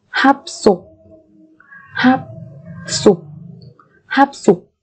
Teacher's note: chúng ta sẽ đọc mà tròn môi cho đến tận khi kết thúc cái âm tiết đó · phụ âm siot biến âm thành phụ âm căng tương ứng của nó, đó là san siot, bởi vì phía trước là phát sinh hi ực.